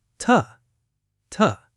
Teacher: But in a sentence, it almost always gets reduced to ta, ta. The oo becomes a schwa.